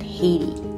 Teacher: we see that t with many american accents will become more of a d sound